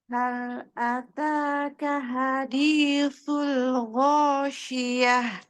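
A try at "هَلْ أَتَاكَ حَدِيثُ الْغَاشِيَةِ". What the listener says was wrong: T-nya dibaca.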